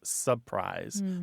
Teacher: Surprise is a very common one. It often comes out as surprise. That first R is gone. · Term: dissimilation